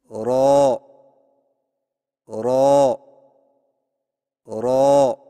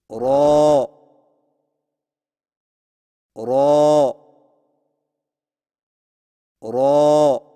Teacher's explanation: زبان کی نوک کی پشت کو اوپر والے دانتوں کے مسوڑوں سے لگا کر موٹی آواز میں پڑھیں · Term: را